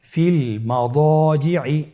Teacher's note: দদের পরে আলিফ হরফটি রয়েছে, এখানে যেহেতু মোটা হরফের আলিফ হরফ রয়েছে তাহলে আলিফটিকেও মোটা করে পড়তে হবে